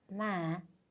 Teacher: 일단 북부에서 하노이에서는 음을 살짝 올렸다가 끝을 내리면서 읽어주거든요. 그래서 우리가 끝을 살짝 올렸다가 이렇게 내리면서 발음을 해줘요. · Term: 호의 성조